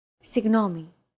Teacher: this character isn't pronounced using an english g sound at all it's like a very soft continuous and loosely held g almost as if you're gargling but don't make it sound too throaty